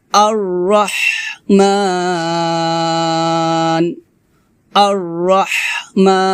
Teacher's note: হামজাকে রকে ধরবে, মোটা করে ধরবে, আর মোটা হবে রটা